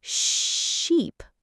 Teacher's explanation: For sheep, your lips are stretched out wider, almost in a smile, and the sound is longer.